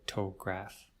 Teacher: Well, you'll notice first the stress. When we say photo or photograph, we stress the first syllable, so photograph.